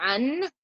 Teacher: To hide the noon in your mouth, you have to keep it away from where it touches normally to say a full noon. So in order to say a full noon, I say an, and I can feel my tongue touching my top. I need to keep it away from there.